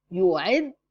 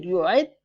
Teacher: When your tongue is up to pronounce letter dal, hold it up until you pronounce the second one with ضمة. So it will be clear. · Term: shadda